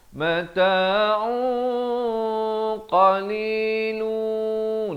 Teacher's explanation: Ini ikhfa dengan tebal, 2 harakat, tanwin bertemu qaf.